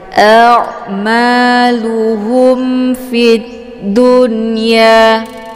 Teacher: Kemudian ada mim sukun bertemu dengan huruf fa, ini disebut dengan izhar syafawi. Jadi dibaca jelas bunyi mimnya, tidak perlu ditahan, cukup ditekan saja.